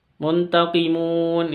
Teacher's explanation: ini Mad Arid lissukun panjang 6 sampai 6 harokat